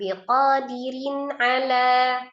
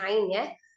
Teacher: rnya kasrah tanwin dibacanya tipis ya kemudian bertemu dengan huruf ain tanwin ketemu dengan huruf ain dibaca izhar halqi karena ain ini adalah salah satu huruf yang keluar dari alhalqi atau tenggorokan